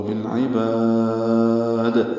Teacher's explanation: ادا کریں گے اور با کو لمبا کر دیں گے، اور دال ساکن پہ وقفاً قلقلہ ہوگا